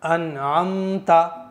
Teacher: जबान की नोक ऊपर के मसूड़े पर टच करेंगे तो नून जाहिर हो जाएगा